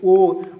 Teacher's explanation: इसका उच्चारण स्थान कंठोष्ठ होता है। याद रखेंगे कंठ और ओष्ठ के मिश्रण से बनते हैं ओ और औ